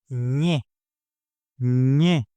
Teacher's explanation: It's almost like saying N plus Y together very quickly, but as one smooth sound. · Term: ñ sound